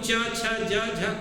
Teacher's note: च, छ, ज झ को क्या करेंगे? मूल स्पर्श संघर्षी व्यंजन कहेंगे।